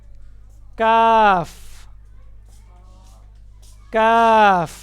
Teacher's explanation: काफ का मखरज कौफ की जगह से जरा नीचे मुंह की जानिब हटकर काफ अदा होता है और यह नरमी से अदा होता है। जहां पर कौफ का मखरज है उससे ज़रा नीचे हटकर काफ़ दो नुक्तों वाला कौफ हमेशा मोटी आवाज में पढ़ा जाता है और जो बगैर नुक्तों के होता है उसको नरमी से अदा करते हैं। · کاف کا مخرج قوف کی جگہ سے ذرا نیچے منہ کی جانب ہٹ کر کاف ادا ہوتا ہے اور یہ نرمی سے ادا ہوتا ہے. جہاں پر قوف کا مخرج ہے اس سے ذرا نیچے ہٹ کر کاف.